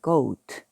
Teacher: OA 붙어 있네요. 그러니까 A 소리 안 내고 앞에 있는 거 O로 오우 소리를 냅니다. 그러니까 그 오트, 그 오트, goat가 됩니다.